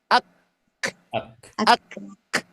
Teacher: Makna hamas pada huruf kaf ini istilahnya bukan mengalir, tapi percikan.